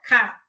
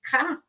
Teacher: Velar, que vai ser o contato da parte superior da língua com o palato mole, ou véu palatino.